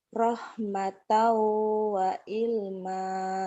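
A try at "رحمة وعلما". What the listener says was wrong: Ainnya keluarin. Wa'il, ain. Keluarin ainnya.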